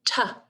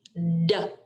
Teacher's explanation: They are sister sounds. T is voiceless and D makes our voice box vibrate.